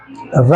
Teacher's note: रा को हम लुंठित कहते हैं या प्रकंपित कहते हैं, और इसका वत्सर्य, उच्चारण स्थान का है वत्सर्य, ठीक है।